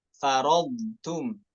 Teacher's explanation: Hati-hati taknya terbawa sifat tebal dari huruf bod. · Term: muraqqaqah